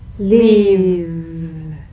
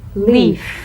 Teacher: One has vocal cord vibration, the other is unvoiced.